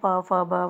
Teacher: इसमें हमारी जीभ मुंह के किसी न किसी हिस्से को जरूर टच करती है, या हमारे होठ जो ये वाले हैं, प फ ब वाली लाइन है, इसमें हमारे होठ आपस में टच होते हैं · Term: स्पर्श व्यंजन